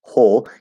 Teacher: So there's going to be an H with an L colored O.